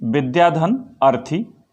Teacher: विद्या में आ है और अर्थी में अ है, तो यहाँ आ और अ मिलकर के आ हो रहा है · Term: दीर्घ